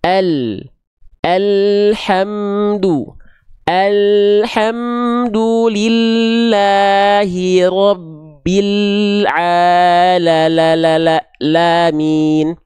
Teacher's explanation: lam itu bukan dilafalkan hanya betul-betul dari ujung lidahnya saja tapi lam itu dilafalkan dari dari sini nih dari samping lidah bagian depan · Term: huruf lam